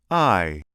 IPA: aɪ